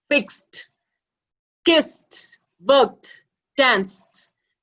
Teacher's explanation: See, voiced D in between of this column, say love, loved, enjoy, enjoyed, open, opened. Okay, and with the regular verb ends with the unvoiced sound, the ed is pronounced as T.